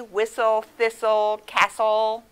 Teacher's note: you don't hear the t it's silent like in the word whistle